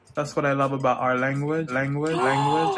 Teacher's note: in miami english you'll hear that dark l in places where you wouldn't hear it in other varieties